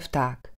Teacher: Znelé v nahradíme neznelým f.